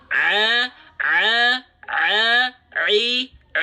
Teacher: dia keluar dari wastul halqi wastul halki itu Tengah tenggorokan tengah-tenggorokan itu bagian yang ini nih ya bagian katup epiglotis kita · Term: Ain